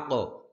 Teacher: আক, হামজা কফ জবর আক, কলকলা হবে, কলকলা মানে প্রতিধ্বনি, হ্যাঁ, পাল্টা আওয়াজ হবে